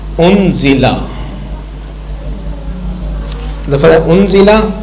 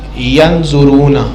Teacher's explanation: اس میں نون ساکن یا نون تنوین کو چھپایا جاتا ہے غنہ کر کے, ناک کے اندر چھپایا جاتا ہے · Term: اخفا